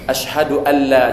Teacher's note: Dia kalau nun bertemu dengan lam, dia terus saja masuk ke lam. Tidak atau tidak dengan dengung atau tanpa dengung. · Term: idgham bila gunnah